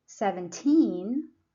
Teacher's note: So you put a stress on the second syllable.